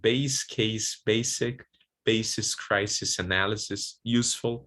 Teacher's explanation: most times letter S is there to represent voiceless alveolar fricative S